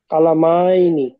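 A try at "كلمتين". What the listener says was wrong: এবার আর টান, এবার আর টান হবে না, বলেন।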